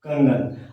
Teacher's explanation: तो हम देख रहे हैं कि यहाँ अनुस्वार अंग का प्रतिनिधित्व करने आया है। अनुस्वार का उच्चारण अंग वाला देंगे तब जाकर हम सही बोल पाएंगे कंगन